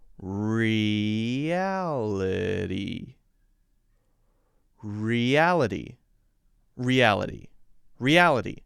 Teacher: the Y, little Y sound between the E and the A, and also the light D sound to replace the end T.